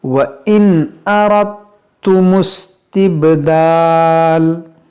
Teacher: नून साकिन के बाद हमज़ा है तो यहाँ पर इजहार का कायदा लगाएंगे, यानी यहाँ पर गुन्ना नहीं करेंगे